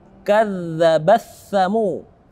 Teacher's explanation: Di sini ada hukum tajwid, ta yang mati bertemu dengan tha, maka taknya tidak kita baca. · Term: idgham mutajanisain